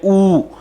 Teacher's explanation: हमें होठों की आकृति संवृत हो जाती है, सिकुड़ जाती है